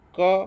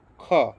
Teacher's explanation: ક બોલશો ને તો અલ્પપ્રાણ આવશે પણ ખ બોલશો ને તો મહાપ્રાણ શ્વાસ વધારે આવશે